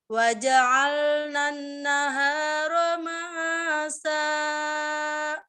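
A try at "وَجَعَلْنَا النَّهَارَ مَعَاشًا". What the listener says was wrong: Itu nada ujungnya naik ya, datarkan. Nun kemudian nun tasdid dengung. Ingat nun tasdid dengung, nun tasdid dengung. Nada yang kedua waja'alna nahara ma'asya.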